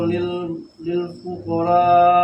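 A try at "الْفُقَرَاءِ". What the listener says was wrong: Jangan fuqara tebal.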